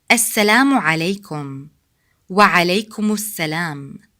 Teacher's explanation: please notice that we don't stop between the two words.